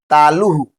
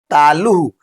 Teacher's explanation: विसर्ग का उच्चारण आधा ह जैसा होता है। ह लास्ट में पढ़ते हैं ना जैसे।